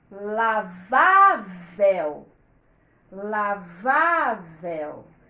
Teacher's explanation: O acento na sílaba do meio, na sílaba penúltima. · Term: paroxítona